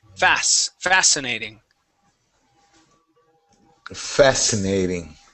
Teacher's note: fascinating with the stress at the beginning